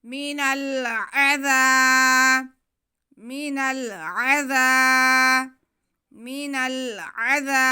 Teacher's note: मीनल, मीनल, बिमुज़हज़िही मीनल, आगे फिर ऐन पे ज़बर, ज़ाल पे ज़बर और साथ में अलिफ, तो ये अलिफ मद्दा हो गया। ज़ाल की आवाज़ को हम नरमी से पढ़ते हुए एक अलिफ के बराबर खींचेंगे।